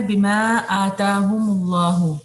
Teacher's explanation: یہاں پہ آپ کا مد منفصل ہے، اور پھر اس کے بعد آ اور تا دونوں ایکولی اسٹریچ ہوں گے